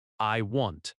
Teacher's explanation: In American English, it sounds like I want. The vowel is open and relaxed.